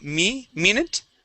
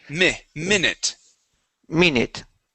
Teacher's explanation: using a Spanish I, we're going to use a short I sound.